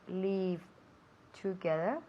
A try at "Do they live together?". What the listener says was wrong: Do they live together? Live, not leave. Es que suena demasiado parecido a salir. Leave. Queremos live. Live. Live.